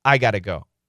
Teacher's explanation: It means I must go. Got to becomes gotta.